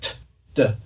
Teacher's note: The reason why they're called dental sounds is because when we make the sound, our tongue goes against the back of our upper teeth